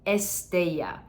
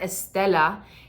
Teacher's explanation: a pilgrim if you say Estella where's Estella but try foreign with the Y sound with the Double L